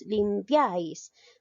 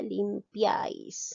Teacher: la mayor fuerza de voz recae en la última sílaba, es decir, en la sílaba número 1.